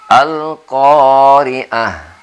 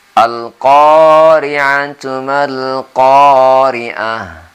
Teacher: kalau berhenti menjadi H, tapi kalau kita sambungkan menjadi ta.